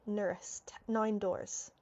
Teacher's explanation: it's like that D isn't even there. Why? Because the N is hiding that D.